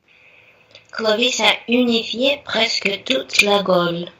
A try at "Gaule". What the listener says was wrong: La Gaule, j'aimerais que ça soit un peu plus Gaule. Gaule, un peu O. Gaule, c'est un peu plus глубже O.